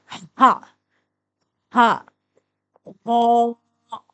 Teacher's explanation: ہا حروف حلقی ہے، حلق کے درمیانی حصے سے ادا ہوتا ہے اور اس کی آواز ہے ہا۔